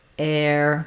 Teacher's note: pronunciation of ear being the the high front gliding ear and air being more open starting in the a position and gliding into the ER